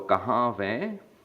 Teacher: Because this verb root ends in a vowel. So we add a v, and then the ending a, nasalized a